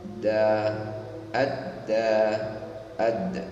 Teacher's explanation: tidak bisa didesiskan tapi dijaharkan ya.